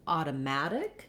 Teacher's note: the main stress is on the mat syllable. And so that letter A has the ah sound like in the word at or cat.